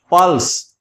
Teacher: तो यहां प के ऊपर बलाघात है, प लंबा, यानी थोड़ा सा इसे समझें आप।